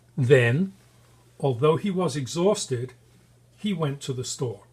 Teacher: we emphasize the words that are important then exhausted and to some extent we emphasize store